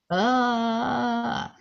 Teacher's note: It's a glottal rumble with a neutral ah.